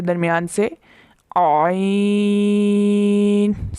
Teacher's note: حلق کے درمیان سے، عین، سکویز کر کے